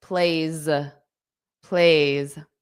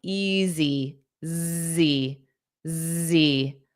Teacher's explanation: sometimes the S will become a voiced sound